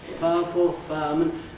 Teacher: What I do is I compress, smooth out a bit that sequence. So I practically lose the I in fireman, and I practically lose the U in powerful. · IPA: /ˋpaəfl̩/, /ˋfaəmən/